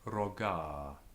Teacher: and think that the weight's been thrown onto the last syllable when it's just a long vowel with a grave accent, with the rising tone on the first syllable. So rogar.